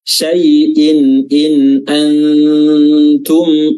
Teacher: huruf ta memiliki sifat hams di mana kita harus mengeluarkan sedikit udara ketika melafazkannya